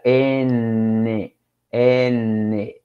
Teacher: la punta de la lengua choca con los alvéolos, por eso se le llaman alveolares.